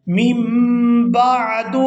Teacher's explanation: نون ساکن کے فوراً بعد اگر با آ جاتی ہے تو وہاں چھوٹی میم بھی ادا کی جاتی ہے